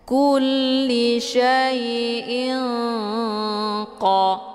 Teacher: harokat tanwinnya disamarkan, kemudian siap-siap mau baca huruf qaf. Ilqa, jadi jangan langsung ing, ya, tapi samarkan tanwinnya dulu, kemudian mau baca huruf qaf, ya. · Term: ikhfa ab'ad